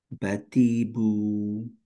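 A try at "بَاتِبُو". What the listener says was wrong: টিতে টান হয়ে যাচ্ছে। বাতিবু।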